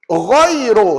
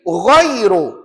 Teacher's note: Ru tu tebal lah tu. Jangan baca nipis. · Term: ra tafkhim